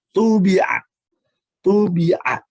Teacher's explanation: Yang keempat, bisa juga disebutkan qalqalah, tetapi qalqalah ini sangat ringan sekali